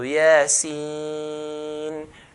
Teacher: These letters we stretch to 6 counts. So yasin, the ya part 2 count, yeah, but the sin part 6 count.